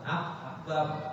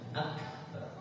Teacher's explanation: jadi bukan akbar, bukan akbar, mesti ada sifatnya yang hembus anginnya